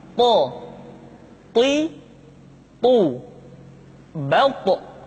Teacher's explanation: To diucapkan dengan menyentuhkan ujung lidah dengan gusi-gusi dua gigi seri bagian atas. Sifat yang dimiliki oleh huruf to yang mesti nampak ketika kita ucapkan adalah sifat al-isti'la dan sifat al-itbaq. · Sehingga dengan dua sifat ini, maka ketika to diucapkan, suara kita terdengar menebal.